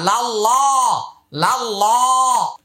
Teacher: আল্লাহ শব্দের পূর্বে জবর অথবা পেশ হইলে আল্লাহ শব্দের উচ্চারণ মোটা হবে, আর জের হলে পাতলা হবে। এখানে যেহেতু আগে পূর্বে ডানে জবর আসছে, তাই এটার উচ্চারণ মোটা।